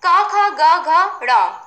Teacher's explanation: जब इनको आप बोलते हो तो आपकी ध्वनि कहां से आती है कंठ मतलब गले से